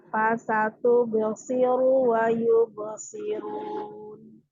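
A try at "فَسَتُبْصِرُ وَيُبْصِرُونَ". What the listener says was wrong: Bagus. Lanjut.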